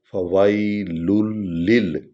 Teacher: لام کو لام کے ساتھ ملائیں گے کیونکہ لام پر شد ہے، اس کی وجہ یہ ہے، ورنہ تو یہ تھا فویل للمصلین، لیکن چونکہ لام پر شد ہے تو ہم اس لام کی ایک پیش کو پڑھیں گے، ایک کو نہیں پڑھیں گے اور سیدھے اس لام پر آ جائیں گے۔